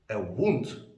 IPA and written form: wuːnd (a Wound)